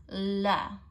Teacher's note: it'll feel like a quick tap with your tongue so remember to exert enough pressure and then make the tap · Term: light l sound